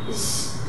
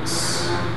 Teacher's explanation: When I say z, I feel vibration in my throat, and when I say s, there's no vibration.